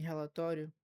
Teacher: Em relatório, existe uma semivogal, o I, junto com a vogal, que é o O.